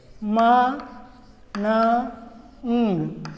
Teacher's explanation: in the nasal sounds, there are 3 symbols: ma, na, ng. Ma, na, ng. All the 3 are voiced.